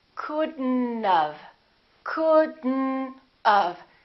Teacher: We pronounce the D and then we connect the D next to the N and then the O disappears, but the T also disappears.